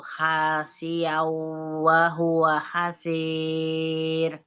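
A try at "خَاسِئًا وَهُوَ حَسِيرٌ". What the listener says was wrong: Kha bukan ha, khasi'aw wa huwa khasi'ah pakai kha. Khasi'aw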